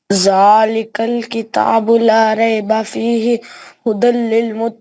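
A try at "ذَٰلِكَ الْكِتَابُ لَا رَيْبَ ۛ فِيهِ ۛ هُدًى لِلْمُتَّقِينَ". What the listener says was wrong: نہیں غلط ہو گیا نا. ایک جگہ پہ ہمیں رکنا ہے, ایک جگہ پہ ہمیں نہیں رکنا ہے, پھر ویسے دوبارہ کر کے پھر اس پہ رکنا ہے, اس پہ نہیں رکنا.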